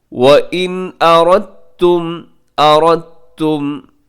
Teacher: وَإِنْ أَرَدْتُمْ میں نون ساکن کے بعد حمزہ, یہاں بھی اظہار کیجیے گا